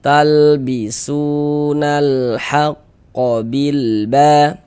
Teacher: Huruf yang memiliki harakat dhamah yang yang memiliki tanda baca domah ini kan huruf sin nih. Makanya huruf sin kita baca panjang kayak gitu. Mad thobi'i panjang dua harakat